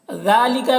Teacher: ज़ाल में खड़ा ज़बर है जो अलिफ मद्दा की तरह है, इसे एक अलिफ के बराबर खींचेंगे।